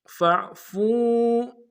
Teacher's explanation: فاعفوا، فا کو عین کے سامنے لانا، عین کو موٹا ادا کریں گے، اور فا کو واو کے سامنے لانا، واو مد کھینچیں گے